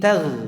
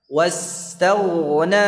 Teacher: Kemudian ghain juga panjang durasinya dan dia tebal.